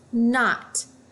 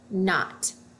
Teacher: Then I notice this KN. I know that when I have KN, the K is silent. All I hear is the N.